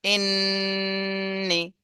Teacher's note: আর নুনের সময় নুন যেখান থেকে উচ্চারণ করতে হয় সেখানে যে জিভটা লাগিয়ে এবার নাকের মধ্যে গুন্না করতে হবে। হামজা নুন জের ইন, নুন জের নি, ইন্নি। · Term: ওয়াজিব গুন্না